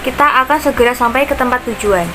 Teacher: pada kata tujuan terjadi pertemuan vokal U dan A yang dalam pengucapannya menghasilkan bunyi semivokal W · Pada kata sampai terdapat diftong AI sehingga ditranskripsikan menjadi AY karena bunyi tersebut diucapkan sebagai satu kesatuan vokal